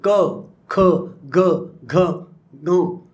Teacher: म्हणजे जे कंठस्थानातून जे निर्माण करतो शब्द त्याला आपण कंठस्वर म्हणतो.